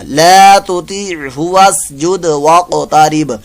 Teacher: वाक़ो तारीब, वाक़ो तारीब, वाक़ो तारीब, क़ाफ साकिन का कलकला और वक्फ की सूरत, वक्फ में यहाँ बा साकिन यानी पहले से बा साकिन है तो यहाँ बा साकिन का भी कलकला होगा